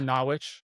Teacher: It's pronounced Nawitch. You know, it's like you just drop some syllables.